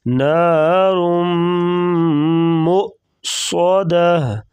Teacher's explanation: میم کے ساتھ جو ہے حمزہ کو پڑھیں گے، نیچے واو نہیں پڑھیں گے، میم کو حمزہ کے ساتھ بنائیں گے اور صاد کو موٹا کریں گے